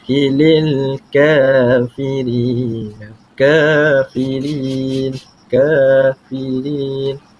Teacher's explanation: kafirin dibaca Dua harakat kerana apa kerana hukum tajwidnya adalah Mad tabii ataupun mad asli